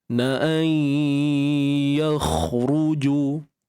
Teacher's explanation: Baik, nun mati bertemu dengan ya di sini IBG, idgham bi gunnah naqis. Jadi masukkan nun ke dalam ya serta kekalkan sifat dengung dalam kadar 2 harakat. Kemudian kha yang mati ni kita tebalkan, angkat pangkal lidah kita untuk dapatkan tafkhim ketebalan pada kha ni.